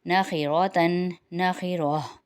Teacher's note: وقف کی صورت میں ہا کی حرکت ختم ہو گئی تو ہا کی صرف آواز آئے گی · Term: گول ہا